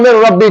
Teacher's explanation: لام اور را میں جو ادغام ہوگا وہ بلا غنہ ہوگا، یعنی غنہ کے بغیر ہوگا